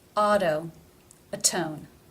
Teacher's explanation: Even though in atone it comes between two vowel sounds, the first rule overrides it. Because it is beginning the stressed syllable, it is pronounced T as a real T.